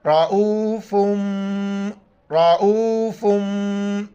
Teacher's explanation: یہاں پر اخفا کریں گے، ناک میں آواز چھپائیں گے